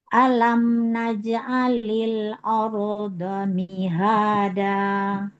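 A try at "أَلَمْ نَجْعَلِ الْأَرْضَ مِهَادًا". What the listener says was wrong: A-nya jangan ikutan tebal. Jangan ardo. Alam naj'alil arda mihada. Ardo. Jangan aro.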